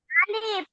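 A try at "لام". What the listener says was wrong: আলিফ কেন? আলিফ কি মাঝখানে এরকম আসে? আপনার উপরেই পড়ছেন, এই যে দেখেন ক, লাম বা উপরে, এই যে উপরে শব্দটাই, এই লামটা হ্যাঁ, কফ লাম, তারপরে কফ লাম মিম।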